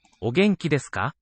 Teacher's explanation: From o to ge, those first two syllables in the sentence, there's a tonal upstep.